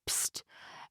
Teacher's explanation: adding a plosive P sound before the sibilant SH